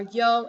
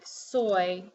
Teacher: I'm sorry it can sound like a semi vowel or consonant for yo it sounds like a consonant but in a word like soy it sounds like a semi vowel